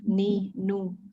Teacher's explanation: huruf nun ujung lidah pada posisi gusi 2 gigi seri atas di bawah sedikit setelah lam.